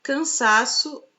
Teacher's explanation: na palavra cansaço a penúltima sílaba a sílaba tônica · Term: paroxítona